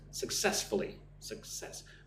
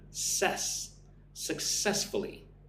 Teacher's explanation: Put the emphasis on the second syllable.